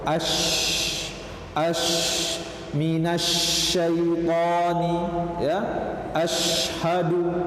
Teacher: Udara tafashi dia kuat, udara yang menyebar, kemudian hamas juga masih ada di sana karena ada aliran udara, ya. Jadi ketika mengucapkan huruf shin, udara menyebar dengan kuat.